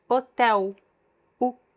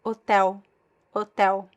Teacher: if I have the L at the end of a word, like hotel, hotel, u, the L is pronounced as a weak U sound.